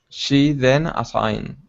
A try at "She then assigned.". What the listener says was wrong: Good. Much better that time. Much better.